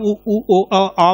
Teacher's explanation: वृत्तमुखी आप उ ऊ ओ आ बोलेंगे तो ये जो है गोलाकार होंगे।